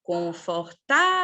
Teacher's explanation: tem como sílaba tônica a penúltima por isso são paroxítonas